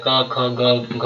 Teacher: घ का जो उच्चारण स्थान है वो कंठ से बोला जाता है